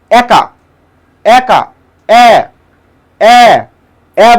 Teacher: যেহেতু মুখের হা বড় হয়ে যাচ্ছে তার মানে এখানে বিবৃত উচ্চারণ হয়েছে।